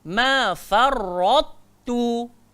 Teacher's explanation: Huruf ta nipih, huruf ta gemuk. Tapi ketika nak menyebutnya jangan buang kegemukan ta, tapi yang keluar kurus ta. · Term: idgham naqis